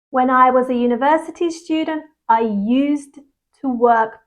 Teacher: Okay, we have a d sound here. But when used is followed by to, often that D is silent